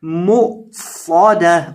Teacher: हमजा साकिन को झटका करके पढ़ना है